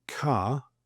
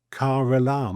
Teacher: the Brits sort of swallow the R unless followed by a vowel. The vowel could be at the beginning of the next word. So we say car, but we say caram and you almost sort of push off the R to get to the vowel.